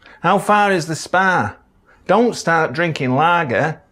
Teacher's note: The calm vowel is quite far forward.